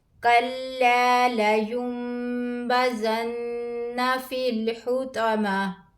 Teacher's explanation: نون ساکن کے بعد حروف اقلاب میں سے با آیا ہے تو یہاں پر نون کو میم میں بدل کر پڑھیں گے. اس کو اقلاب کہتے ہیں.